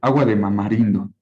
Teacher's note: Es la asimilación progresiva no adyacente que cambia de la dental a la bilabial